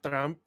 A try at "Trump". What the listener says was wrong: I love how the way you pronounce it almost sounds like you call him a tramp, which is adds extra insult.